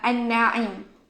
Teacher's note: Okey, an-na'im ni dia ada silent letter dia, iaitu huruf lam. Huruf lam dekat perkataan an-na'im tu kita silentkan dia.